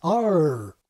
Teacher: Specifically, the vowel glides into what we can call a bunched r. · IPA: ʌɹ